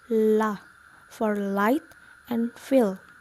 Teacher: And then liquid. We let air stream on the sides of our tongue.